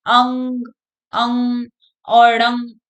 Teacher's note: मुख से कम और नाक से ज्यादा बोले जाते हैं, इसलिए इनको नासिक्य वर्ण बोलते हैं।